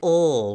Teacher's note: it's a hard velar sound it's in the back of the mouth